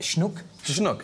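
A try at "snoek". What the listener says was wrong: Well, it's not schnook, it's just snook, but yes,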